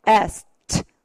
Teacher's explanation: 무성음으로 끝날 때는 무조건 바람 소리로 끝나면 트 발음으로 나라는 거